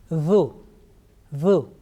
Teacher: Okay, this time we have picked Zal. So tip of tongue is touching the front upper teeth, that edge, and you are pronouncing this one softly with thin sound